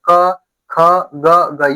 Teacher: जो क वर्ग है, क से अंगा तक, ये कहां से हो जाते हैं? कंठ से।